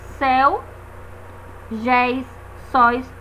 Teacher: abertos éo seguidos ou não de S exemplo céu Geis sois notem que são ditongos abertos